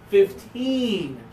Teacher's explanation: put the stress on the last syllable